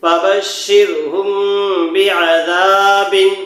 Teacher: میم پر جزم لگا ہوا ہے اس کے بعد با آ گیا تو یہاں کیا کریں گنہ کے ساتھ اخفاء دے کر پڑھیں